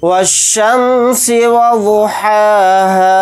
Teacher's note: हा के ऊपर खड़ा ज़बर है, हा को थोड़ा खींच कर पढ़ेंगे 1 अलिफ की मकदार। हा के साथ अलिफ मद्दा है यानी हुरूफ मद्दा, हा अलिफ ज़बर हा को थोड़ा खींच कर पढ़ेंगे 1 अलिफ की मकदार।